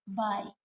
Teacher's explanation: Bilabial sounds which are produced by putting two lips together